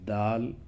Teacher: دال کا مخرج بھی زبان کی نوک اور ثنایا علیہ کی جڑ ہے